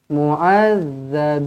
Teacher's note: Zal, keluarkan lidah sedikit, makhrajnya di hujung lidah. Mu'adzabin, bin mad arid lisukun.